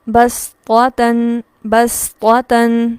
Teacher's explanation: سین چونکہ پر حروف میں سے نہیں ہے لہٰذا زبان کی جڑ کو پیچھے سے نہیں اٹھائیں گے، سین کو پراپر ادا کرتے ہوئے بسطتن بسطتن، ٹھیک ہے.